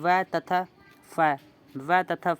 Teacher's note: दंतोष्ठ है यानी दांतों प्लस ओष्ठ से जिनका उच्चारण होता है वो दंतोष्ठ वर्ण कहलाएंगे।